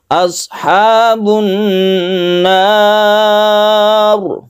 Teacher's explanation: Roknya ditebalkan karena sebelumnya ada fathah.